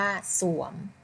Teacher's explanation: อ่านออกเสียงตัวสอเสือตัวข้างหน้าเพียงตัวเดียวค่ะ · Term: คำควบกล้ำไม่แท้